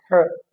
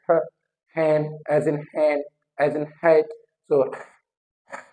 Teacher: Air is coming out continuously but इन friction, and there is the narrow opening to the air, एक narrow opening है from where air is passing out. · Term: ग्लोटल